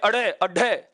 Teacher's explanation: इसका उच्चारण करते समय जीभ इतना झटका खाती है, ऐसे लग रहा है जैसे मुंह से बाहर फेंके जा रहे हों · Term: उत्क्षिप्त व्यंजन